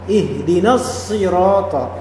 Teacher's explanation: Untuk na di sini dia tidak dipanjangkan. Kenapa? Karena langsung melebur ke shad.